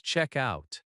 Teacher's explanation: Notice that check-out can be two words, and the stress is on check.